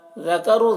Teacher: ذال کو باریک پڑھیں گے، را کو پر پڑھیں گے، را کے اوپر پیش ہے.